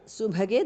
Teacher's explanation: the bha is mahapranaha